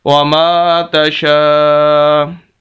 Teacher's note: وَمَا تَشَاءُ، تا پر بھی زبر، شین پر بھی زبر، شین کے آگے الف ہے اور اس پر مد ہے، اور یہ سب سے بڑی مد ہے، 5 الف کے برابر اس کو لمبا کرنا ہوتا ہے